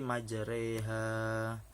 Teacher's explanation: imalah yang berarti condong atau miring, sekitar 80% dari fathah dan 20% dari kasroh